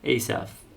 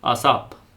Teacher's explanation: But, in Armenian, it's always a pure a sound.